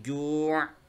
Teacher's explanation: Tanwin bil kasri ketika bertemu waqaf dia enggak dibaca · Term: ain sakinah indal waqfi